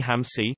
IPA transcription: ɦə̃si